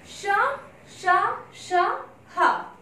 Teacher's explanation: इनके उच्चारण में मुंह से गर्म श्वास निकलती है। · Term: ऊष्म व्यंजन